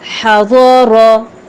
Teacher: ضاد اور را اپنے مخرج سے ادا ہوں گے لیکن پر ادا ہوں گے، موٹے ہیں یہ دونوں